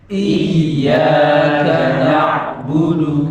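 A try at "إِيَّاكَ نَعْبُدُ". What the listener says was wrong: Nah, kepalanya nggak usah. Yang dinaikkan nadanya, bukan kepalanya. Tapi kalau mau dibantu kepala ya. Yang penting nadanya naik. Yang parah itu yang naik kepalanya toh. Nadanya tetap ya. Yang betul nadanya yang naik. Nah, ya tasdid sama nanti waw tasdid itu cara membacanya nabr.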